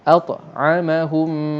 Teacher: Mim yang selepas dia tu diberi tanda sabdu, maka di sini berlakulah hukum idgham. Maknanya mim pertama dah tak bunyi langsung dah, seolah-olah kita lompat ha kepada mim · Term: idgham mislain